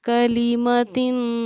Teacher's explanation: اس کو ہم 2 زیر کی تنوین کہتے ہیں، اور تنوین کے بعد حروف اخفا میں سے کیونکہ سین آ رہا ہے اس لیے ہم نے اس کو ایک ٹھہراؤ کلیمتن، تن کو ہم نے کھینچ کر پڑھا اور ناک میں اپنی آواز کو کیا، کیونکہ یہ اخفا کے پڑھنے کا طریقہ ہے.